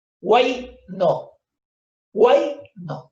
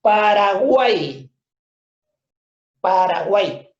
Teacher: Guay es un solo golpe de voz. Se están uniendo acá 3 vocales. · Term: triptongo